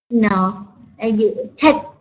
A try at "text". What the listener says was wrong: Yeah, so you want to say the text. The end, you want to do that XT sound, text.